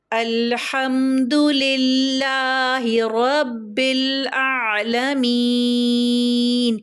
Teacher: میم یا زیر می کی جو 2 حرکات ہے وہ مد عارض وقفی کی وجہ سے کیا ہو جائے گی، 4 حرکات کھینچ کے پڑھیں گے